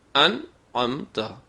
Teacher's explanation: کتابوں میں اس کا نام اظہار نون کا قانون لکھا جاتا ہے کہ یہاں پر نون کی اپنی اصلی آواز ظاہر ہوگی اور صاف ہوگی